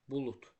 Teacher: Artıq səs dəyişdi də, D hərfi t səsinə çevrildi. Sözün yazılışına deyiliş arasında səs dəyişməsi baş verdi.